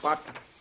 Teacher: ਜਿਆਦਾ ਕਸ ਕੇ ਨਹੀਂ ਪੱਟ ਨਹੀਂ ਕਹਿਣਾ ਦਰਮਿਆਨਾ ਜਿਹਾ ਬੋਲਣਾ